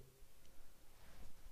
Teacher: D is voiced and T isn't.